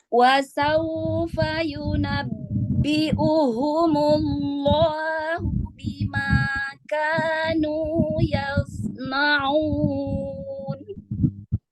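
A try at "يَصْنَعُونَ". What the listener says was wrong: Ya, sama dengan ketika dia terakhirnya adalah huruf nun ataupun mim, dia kan nun dan mim itu ada sifat ghunnanya ya. Jangan terpengaruh ketika sebelumnya itu adalah dhammah. Yasna'u, dhammah kan dia dimajukan tuh, tapi nunnya harus kembali. Nun misalnya un ya, yasna'un.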